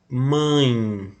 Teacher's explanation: percebam que sai um pouquinho pela boca e um pouquinho pelo nariz. Por isso é classificado como nasal.